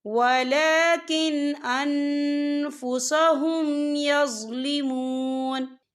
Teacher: وما ظلمهم اللہ ولكن انفسهم یظلمون، یا دیکھیں ولیکن، یہاں نون ساکن ہے، نون ساکن کے بعد جو ہے حمزہ آ رہا ہے، اور حمزہ جو ہے حروف ہلکی کا ورڈ ہے، تو ہم یہاں اظہار کریں گے اور ہم اسے بنا غننے کے پڑھیں گے